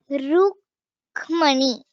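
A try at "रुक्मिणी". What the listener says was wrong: It has a ikara. Rukmini.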